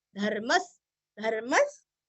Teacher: विसर्ग है यहाँ पे हल्का सा स